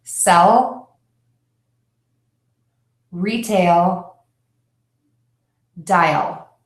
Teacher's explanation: we tend to end the sound in a very specific place with the tip of your tongue touching the back of your top teeth.